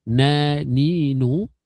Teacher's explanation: Na, ni, nu pun sebenarnya ada suara yang pergi kat rongga hidung kita. Tapi dia sekadar adalah, sekadar sifat asliyah dia sahaja, tapi bukan suara dengung yang menjadi hukum bacaan.